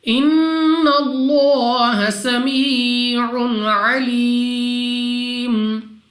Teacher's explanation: نون مشدد غنہ کر کے پڑھیں گے، ناک میں لے جا کر پڑھنا ہے۔ لام آف اللہ سے پہلے حرف ہے نون، اور نون پر زبر، تو اس لام آف اللہ سے پہلے حرف پر زبر ہے، تو لام آف اللہ کو پر یعنی موٹا پڑھیں گے۔ · لام آف اللہ سے پہلے حرف ہے نون، اور نون پر زبر، تو اس لام آف اللہ سے پہلے حرف پر زبر ہے، تو لام آف اللہ کو پر یعنی موٹا پڑھیں گے۔ اس کے بعد 2 سیکنڈ تک کھینچ کر بھی پڑھنا ہے کھڑا زبر کی وجہ سے۔